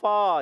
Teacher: فا کی ادائیگی اوپر والے دانتوں کے کنارے نیچے والے ہونٹ کے تر حصے سے لگیں گے تو ادا ہوتا ہے فا